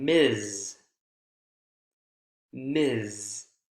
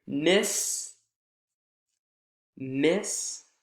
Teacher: a zz final consonant sound instead of a s final consonant sound that's voiceless s and voiced ZZ